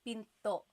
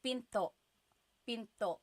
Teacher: Do you hear the glottal stop when I say pinto?